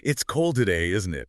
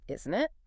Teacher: A falling intonation signals you're not really asking for information. You both know it's cold.